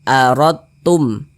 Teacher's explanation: huruf dalnya ini langsung masuk ke huruf ta yang di depannya ini begitu. Langsung melebur masuk ke huruf ta. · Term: idgham mutajanisain